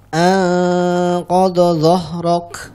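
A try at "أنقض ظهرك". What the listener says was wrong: Nah, ini hati-hati ya, untuk huruf dhad dan huruf dha-nya bedakan. Anqadha, yang pertama pakai dhad, dhahrak yang di depan. Anqadha dhahrak. Baik, nanti dilatih untuk dhad dan dha-nya.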